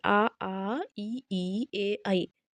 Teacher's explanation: आवृत्तमुखी का मतलब ये कि जब हम उच्चारण करें तो हमारा जो होठ है या मुख है वो क्या हो वृत्त ना बने